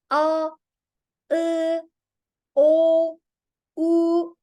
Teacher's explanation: We produce them on the back side of our mouth. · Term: back vowels